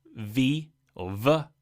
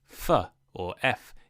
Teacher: V or V is voiced so you use your voice box in your throat and F or F is unvoiced meaning no voice box